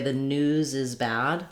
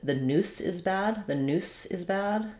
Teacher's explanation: when I'm linking, if I say the news is bad, I'm really going to hear that Z sound as I link. If I said the noose is bad, it's more clear that there's a little bit of a break there and my S sound is stronger.